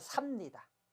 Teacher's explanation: 살다 다음에 비읍니다가 오면 리을이 탈락해서 삽니다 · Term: 리을 탈락